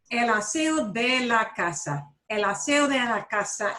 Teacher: And he pretty much slides right over that D. But notice that D is sandwiched in between an O and an E. · Lo primero que quiero que notes es cómo él no pronunció la D cuando dice el aseo de la casa. Esa D la pronuncia tan suave que casi no se oye.